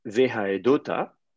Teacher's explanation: Et donc là, à ce moment-là, on dit, OK, j'ai le verbe témoigner, oifil, donc oifil, c'est faire témoigner, haed, et au lieu d'avoir haeta, on met une voyelle de liaison o, haedota. Et puis le vav, la conjonction coordination, on lui met juste un petit schwa